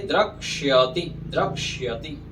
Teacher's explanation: द्रक्ष्यति जो श होता है ना उसमें क और मूर्धन्य स रहता है